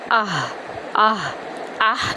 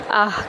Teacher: گول ہا ہے، اس کو ہم سینے کی جانب سے ادا کریں گے، نہ کہ وسط حلق سے۔ حمزہ ہا زبر آہ، آہ، آہ نہیں کریں گے، آہ کریں گے، ٹھیک ہے۔